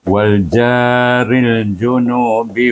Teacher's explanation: junubi jangan panjangkan Dia pendek saja